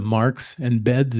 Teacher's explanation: You could say that S becomes Z when the consonant before it is voiced.